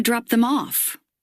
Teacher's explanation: the rising intonation goes in this case at the end